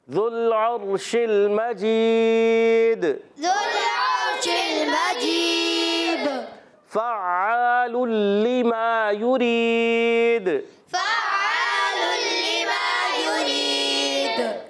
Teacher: فا کی ادائیگی ہوتی ہے اوپر کے دانتوں کے کنارے، نیچے والے ہونٹ کا تر حصہ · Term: فا کا مخرج